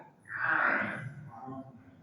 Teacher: ain keluar dari tengah tenggorokan atau tenggorokan bagian tengah